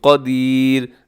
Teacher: را ساکن ہوگی تو را باریک ہوگی کیونکہ را سے پہلے یا ساکنہ آ گئی ہے.